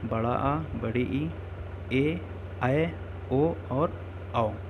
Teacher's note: इनमें 2 मात्रा का समय लगता है, यानी कि हर्ष स्वर से 2 गुना टाइम लगता है, इसलिए इन्हें हम द्विमात्रिक स्वर भी कहते हैं, इसलिए इन्हें हम दीर्घ स्वर भी कहते हैं।